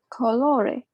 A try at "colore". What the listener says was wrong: you read it slightly too open